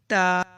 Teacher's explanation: اس سے نیکسٹ حرف آتا ہے تا، تا جو ہے زبان کو اوپر والے دانتوں کے پیچھے لگا لیں، جیسے میں کہہ رہی ہوں اس طرح سے آپ ریپیٹ کیجئے، پریکٹس کیجئے۔ تا زبان کو اوپر والے دانتوں کے پیچھے لگائیں تو پھر ساؤنڈ نکلے گی